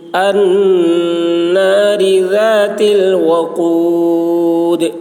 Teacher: النار ذات ذال کی آواز باریک، تا باریک